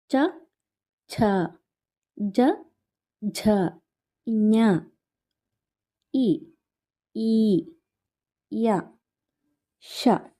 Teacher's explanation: ಈ ತಾಲವ್ಯ ಅಕ್ಷರಗಳು ತಾಲು ಅಥವಾ ದವಡೆಯ ಸಹಾಯದಿಂದ ಹುಟ್ಟುತ್ತವೆ · ಈ ತಾಲವ್ಯ ಅಕ್ಷರಗಳಲ್ಲಿ ನಮ್ಮ ನಾಲಿಗೆ ಎರಡು ಬದಿಯ ದವಡೆಗೆ ಒತ್ತುತ್ತೆ ಆವಾಗ ಈ ಅಕ್ಷರಗಳು ಉತ್ಪತ್ತಿಯಾಗುತ್ತೆ